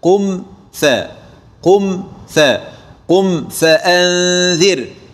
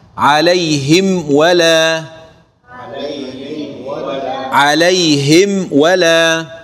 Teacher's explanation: أرح الميم وحقق الجهر والتوسط الذي بها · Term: الإظهار الشفوي